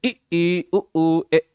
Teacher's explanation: जिन स्वरों के उच्चारण में मुख द्वार लगभग बंद रहता है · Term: समृत